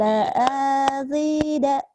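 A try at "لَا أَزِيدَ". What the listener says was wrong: Kenapa A-nya panjang? Ayo, nggak ada yang manjangin.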